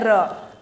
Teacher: हवा फेफड़े से निकल रही है और दांत के पीछे मतलब दांत के मूल के पास जाके टकरा रही है यहां पे जाके म ये हमारे दांत है और यहां जैसे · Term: दंत मूल